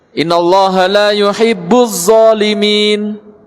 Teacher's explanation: Nah terkadang pengucapan dal, pengucapan dha terucap dari pangkal gigi seri atas. Jadi terucap zo.